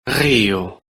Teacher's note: portugal portuguese in which it's pronounced like the voiced uvular fricative or a voiced uvular trill